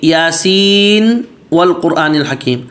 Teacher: اب یہ یاسین کے نون پہ غنہ نہیں کریں گے کہ آگے واو آ رہا ہے، حرف ادغام میں سے آ رہا ہے تو ادغام کر کے غنہ کریں، نہیں، یہاں پر نون کو ظاہر کر کے پڑھیں گے۔